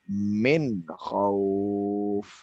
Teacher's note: Pada nun yang terakhir ini tidak didengungkan.